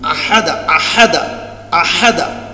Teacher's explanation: হা দিয়ে উচ্চারণ হয় যে গলার মাঝখান থেকে, আহাদা, আহাদা, আহাদা, এটা একটু চাপ দিয়ে বলতে আহাদা, আশারা আইন আর হা আহাদা।